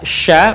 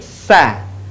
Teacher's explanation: menyebar nafas dan udaranya yang disebut dengan tafasyi.